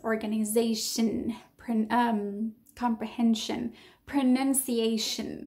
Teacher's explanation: All of those words that end in ation somehow, if you think about it, they're not stressed in their last syllable, which means that even though you see a different spelling, so I-O-N, the pronunciation is also a schwa